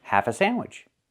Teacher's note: We don't use the of. We eliminate of. We say half a sandwich. Link the words.